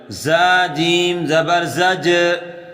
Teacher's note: اگلا حرف زا جیم زبر زج، زا کو سختی سے ادا کریں اور جیم پر قلقلہ کریں۔